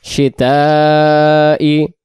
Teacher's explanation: এখানে শিন অক্ষরটাকে আমরা টান দেব 4 আলিফ সম পরিমাণ